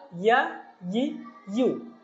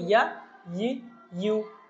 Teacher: ইয়া হরফের উচ্চারণটা জিহ্বার মধ্যখান থেকে